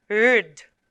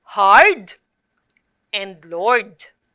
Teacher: The two consonants are blended, but you can still hear the individual sounds of R and D. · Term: final consonant blend RD